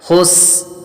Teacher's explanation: سین حروف صفیریہ میں سے ہے، سیٹی کی آواز آئے گی